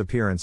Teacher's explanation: syllable indicates where the accent or stress is in this case the accent is in the second syllable corresponding to peer